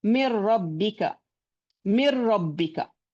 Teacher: the noon, the sifat of noon, the gunna has merged into ra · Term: complete idgham